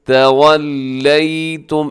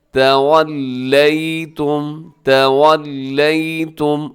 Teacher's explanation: ثم میم مشدد پہ غنہ کیجیے گا